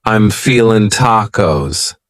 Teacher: You might say, I'm feeling, cutting off that G.